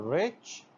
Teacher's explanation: So this cha sound is the example of post-alveolar sound.